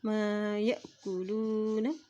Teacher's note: अब यहाँ देखिए हमज़ा के ऊपर जज़म है, जब भी हमज़ा के ऊपर जज़म आ जाती है तो वहाँ पर झटका दे के पढ़ा जाता है